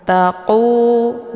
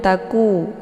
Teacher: saat melafan huruf qf ini ee pangkal lidahnya terangkat tersentuh dengan langit yang lunak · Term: qaf dibaca tebal